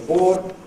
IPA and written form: bɔːd (board)